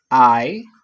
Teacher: the first sound of the of the def thong there's there's uh stronger sounds and then you are going to be like gliding to the second sounds which is less pronounced